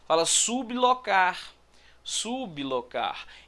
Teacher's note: Então esse B, ele é pronunciado separado em relação ao L. Isso não é um encontro consonantal perfeito.